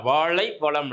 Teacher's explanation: அதே மாதிரி சிறப்பு லகரம். நாவின் நுனி மேல்நோக்கி வளைந்து வருடுவதால் இது சிறப்பு லகரம்